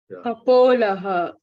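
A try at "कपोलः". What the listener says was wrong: Ka, la is there. Where is po? Kapola.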